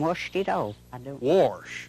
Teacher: Mountaineers will pronounce an R every chance they get